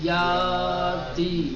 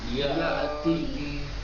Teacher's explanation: یا اتی، ٹھیک، یا اتی، دیکھیں الف جو بنا ہوا ہے اس کے اوپر حمزہ بنایا گیا ہے نا، یا اتی، اگر یہ حمزہ نہیں ہوتا تو اس کو پڑھا جاتا ہے یا تی، لیکن یہ پڑھا جائے گا یا اتی